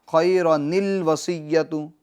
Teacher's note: الوصیۃ کا جو حمزہ ہے اس کو گرا دیں گے, حذف کر دیں گے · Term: حمزہ وصلی